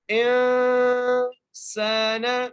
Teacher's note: سین کو ایک الف مقدار کھینچ کے پڑھیں گے، سین کو سیٹی سے پڑھیں گے، نون کے اوپر زبر ہے.